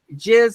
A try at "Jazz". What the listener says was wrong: We like that you call him Jizz instead of Jazz, but it's Jazz. It's actually Jazz McVanderhalen. It has an umlaut over it.